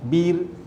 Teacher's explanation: ra dibaca nipis kerana huruf sebelum ra berbaris di bawah, ba tu berbaris di bawah.